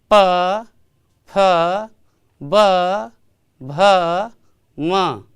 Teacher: तब क्या देख रहे हैं कि स्पर्श हो रहा है, प में भी स्पर्श हो रहा है, फ में भी स्पर्श हो रहा है। यह जो स्पर्श वर्ण है प फ ब भ म, यह ओठ से, ओष्ठ